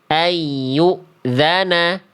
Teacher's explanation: Dia kurang ditahan 2 harokat.